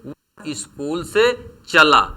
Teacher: इस वाक्य में जो चला शब्द है, इस चला शब्द में जो च वर्ण है इस पर बलाघात है। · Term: अक्षर या वर्ण बलाघात